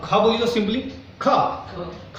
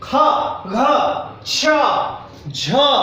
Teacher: जैसे क, अब ख बोली तो सिंपली ख में थोड़ा सा वायु ज्यादा लेना पड़ रहा है ना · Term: महाप्राण